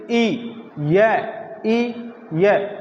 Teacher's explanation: जहां से हम ई बोलते हैं वहीं से य बोला जाएगा इसलिए य का उच्चारण स्थान रहेगा तालू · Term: तालव्य